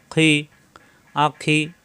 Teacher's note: কণ্ঠনালীর শেষ অংশ থেকে খি